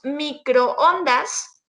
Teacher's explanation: una secuencia de 2 vocales que aunque están juntas, pertenecen a diferentes sílabas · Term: hiato